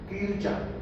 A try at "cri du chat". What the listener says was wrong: No con la T.